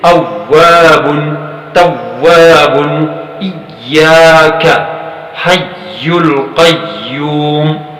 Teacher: ایسے مشدد واو اور مشدد یا کی آواز میں کوئی غنہ نہیں ہے